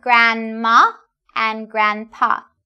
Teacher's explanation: We don't really say the /d/.